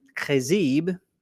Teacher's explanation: it's not a ch sound it's a k sound it's like you're spitting